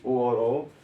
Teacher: ओ और औ कंठ और ओष्ठ की सहायता से बोले जाते हैं